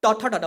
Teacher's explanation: जब बोलिएगा ना तो जिह्वा मुड़ जाता है और ऊपर तालु में जाकर टच करता है, ठीक। तो ये मूर्धा कहलाता है, मूर्धा से जो उत्पन्न होता है व्यंजन, ठीक।